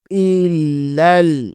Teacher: حمزہ زیر کو لام کے ساتھ ملائیں گے، لام مشدد ہے، اسے 2 دفعہ پڑھیں گے. پھر آگے والے لام کو لام کے ساتھ پھر دوبارہ ملا لیں گے.